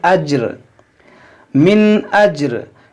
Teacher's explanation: यहाँ पर देखें वक्फ़े जायज़ की अलामत है, यहाँ वक्फ़ करेंगे तो ये दो, यहाँ पर आप देखें वक्फ़े जायज़ की अलामत है। यहाँ पर वक्फ़ करेंगे तो ये रा को साकिन करेंगे, जीम साकिन है, रा भी साकिन होगा,